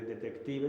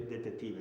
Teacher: la KT en lugar de detective se dice detetive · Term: reducción de los grupos consonánticos